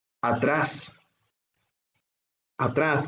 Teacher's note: atrás es una palabra aguda porque está acentuada en su última sílaba